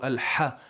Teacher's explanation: it's coming from the middle section of the throat al ha I'll push a little more and make sure you